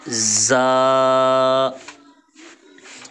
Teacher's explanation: صفیریہ میں سے سیٹی والے حرف میں سے تو سیٹی کی آواز آئے گی